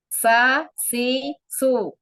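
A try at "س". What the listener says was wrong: Kurang sofir, kurang sifatul hurufnya. Jadi seperti huruf sa terdengarnya. Sa, si, su. Makhorijul huruf sin itu dari ujung lidah hampir ketemu gigi seri bawah. Sa. Jadi datar aja lidahnya, pangkal lidah datar aja. Kok kalau di anak seperti terdengar huruf sa. Jangan ujung lidahnya jangan keluar ke dari gigi seri atas, jangan keluar, nggak keluar. Sa di dalam gigi, di bawah gigi seri bawah Bunda.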